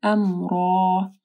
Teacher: را موٹی پڑی جائے گی اور الف مدہ جو آخر میں ہے اس کو پڑھنا ہے